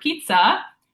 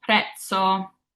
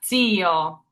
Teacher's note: if you break up the double Z in the word pizza, it's a TS sound. So pizza is how I'd spell this out phonetically.